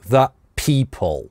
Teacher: здесь that на гортанную смычку /t/ замещается, потому что /p/ дальше, согласный, that people.